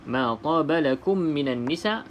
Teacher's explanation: Okey, minan nisa, lam yang kosong, okey, tidak ada tanda, maka di sini alif lam syamsiah terus masuk ke dalam huruf nun, tidak perlu sebut huruf lam. Nisa, okey, hamzah di sini dengan alif berada dalam satu kalimah, bermaksud di sini wajib muttasil.